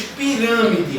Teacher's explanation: O rã é pronunciado com mais força. Então o rã é a minha sílaba tônica.